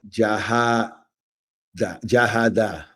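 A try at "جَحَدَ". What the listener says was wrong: Perfect. So you're doing it exactly right because you said jaha and you kind of extended it, right?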